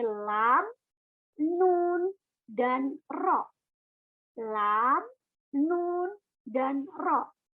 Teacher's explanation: dari tepi lidah dihimpit ke langit-langit atas